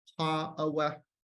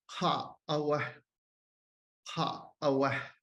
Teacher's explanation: there's a glottal catch, like a glottal stop right at the end of the vowel, which doesn't normally happen in other varieties.